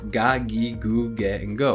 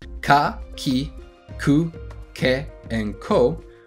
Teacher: Ka, ki, ku, ke, and ko are all ga, gi, gu, ge, and go, which is the voiced sound. G is the voiced version of k.